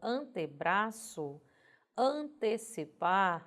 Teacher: Em palavras formadas com o prefixo ante, que na grafia é o E, porém quando nós escutamos na pronúncia vem o I